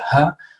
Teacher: It's like it causes turbulence in the mouth, okay? And so in the case of an H, it's not really a fricative sound. It's an aspirated sound.